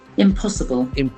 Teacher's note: Accent falls on the second syllable.